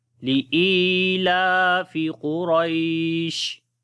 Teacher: قاف کو موٹا پڑھیں گے، حروف استعلا میں سے، را کو بھی موٹا پڑھیں گے